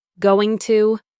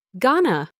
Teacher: The manager said, "I'm going to have to finish this report." In natural, fast speech, going to gets crushed together to become gonna. The T sound is dropped, and the O in to becomes a schwa sound.